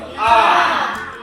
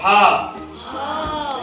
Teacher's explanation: ये जो है कंठ वर्ण, यानी इनका उच्चारण जो है कंठ से होता है।